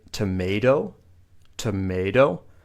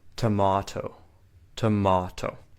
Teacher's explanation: Again, you can see the T sound in American English is more like a D, but in British English, it often stays like a T.